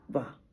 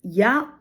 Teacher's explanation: या अभी या में होठों में कोई गति नहीं हुई। वा में होठ फैल जाता है, या में होठ तटस्थ रहता है। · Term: अर्ध व्यंजन